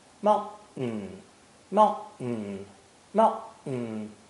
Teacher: the T and the N sounds are produced at the exact same position in your mouth, behind your upper teeth. This saves energy because the tongue doesn't move at all. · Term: TN sound